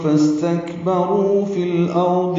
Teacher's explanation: فس سین ساکن پہ ہمس ہے، تک کاف ساکن پہ بھی ہمس ہے، را پر ہے اور رو واو مدہ ہے. فاستکبروا یہ واو مدہ 2 حرکات لمبا کریں گے. فی الارض میں لام ساکن پہ اظہار قمری ہے، حمزہ کو را سے ملائیں گے اور را پر پڑھیں گے، ضاد بھی پر پڑھیں گے.